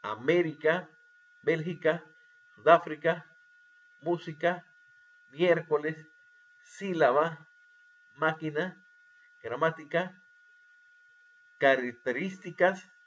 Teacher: nosotros nos damos cuenta exactamente la ante penúltima sílaba llevan la fuerza de voz · las palabras esdrújulas, que son las que llevan la intensidad de voz en la antepenúltima sílaba